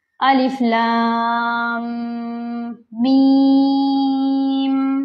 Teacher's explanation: تو جیسے ہی لکھا ہے ویسے ہی پڑھا جائے گا الف، لام کو 4 الف کے برابر کھینچنا ہے اور لام کو میم سے ملانا بھی ہے ، جیسے الف لام 4 کاؤنٹس کریں گے، الف لام میم